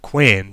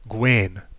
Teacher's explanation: beginning with the voiceless sound k rather than the voiced g